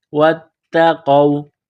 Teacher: ولو انہم آمنوا، حمزہ کڑا زبر آ میم زبر ما، نون واو پیش نو، آمنوا واتقوا، واو کو تا کے ساتھ ملانا ہے، تا میں سختی کرنی ہے، قاف کو واو کے ساتھ ملانا ہے، قاف کو موٹا کرنا ہے۔